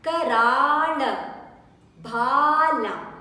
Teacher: the Bha needs to be stressed and extended